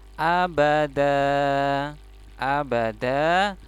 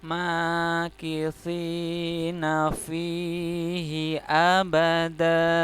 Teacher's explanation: dalnya fathah tanwin, maka dia dibaca panjang karena di tempat wakof. Jadi setiap fathah tanwin di tempat wakof maka dibaca panjang seperti matobi'i.